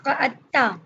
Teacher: دال اور تا مل گئی اس لیے تشدید لگی ہے کہ پڑھنے میں دال اور تا کا ادغام ہو جاتا ہے